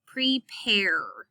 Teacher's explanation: the a kind of blends in with that r to make an error sound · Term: vowel controlled r, vowel-controlled R